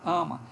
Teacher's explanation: Não sai esse A de casa, por exemplo, A aberto, ele sai mais fechado